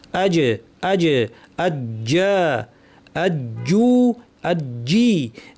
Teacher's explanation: জিম উচ্চারণের সময় জিব্বা তালুটাকে একদম সিল করে দিচ্ছে, কোনো বাতাস বের হওয়ার কোনো জায়গা এখানে নাই। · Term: জিমের উচ্চারণ